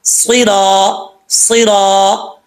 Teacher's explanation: سوئی، سوئی را کے اوپر زبر ہے، آگے الف ہے، ایک الف کی مقدار اس کو لمبا کریں گے، را کے اوپر زبر ہے، پر پڑھا جائے گا، موٹا پڑھا جائے گا